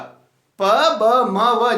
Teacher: प ब म व जब उच्चारण करते हैं तो दोनों ओष्ठ अपने आपस में एक दूसरे से क्या होता है, मिलते हैं। तो जो प ब म है और व, प ब म व 4 है, बाइलेबल।